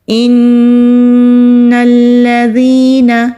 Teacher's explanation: جب بھی نون پر تشدید ہو وہاں پر ہم غنہ کرتے ہیں، 2 سیکنڈ کے لیے آواز کو ناک میں روک کر رکھیں گے · نون کو لام کے ساتھ مضبوطی سے ملانا ہے، ذال کو نرمی سے ادا کرنا ہے